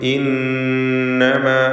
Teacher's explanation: നൂൻ മുശദ്ദദയെ മണിക്കുക 2 ഹറക്കത്തിൻ്റെ അളവിൽ ഉന്ന കൊടുക്കണം